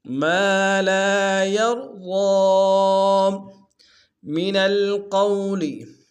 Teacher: را کو موٹا ادا کریں گے، ضاد کو موٹا ادا کریں گے